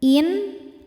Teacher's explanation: Sebab ada nun sukun yang menghadapi huruf halqi atau huruf tenggorokan yaitu ain, maka nun sukun dibaca jelas. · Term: izhar halqi